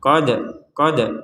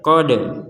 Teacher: Ummatun qad khalat, ada dal sukun. Nah, dal sukun ini kita harus memantulkannya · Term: pantulan